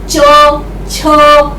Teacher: जब आप ये बोलते हैं तो आपके तालव्य से आपकी जीभ छूती है,